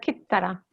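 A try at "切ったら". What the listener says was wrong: Yes, exactly. Good.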